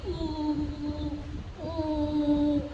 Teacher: the tongue is not touching your teeth and it is not touching your lower palate or upper palate